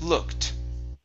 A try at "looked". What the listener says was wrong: Okay, now what you're saying look it. Okay, and you're pronouncing this E. This E is silent, so you want to say looked.